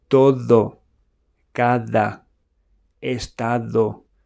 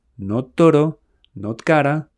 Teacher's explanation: In Spanish, your D should lightly touch the back of your teeth, not the roof of your mouth.